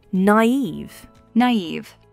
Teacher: it's a two-syllable word, and the stress is on eve.